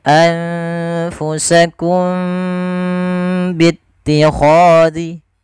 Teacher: cara membacanya suara mimnya harus ditahan tidak sebagaimana izhar yang tidak boleh ditahan suara mimnya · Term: Ikhfa Syafawi, ikhfa syafawi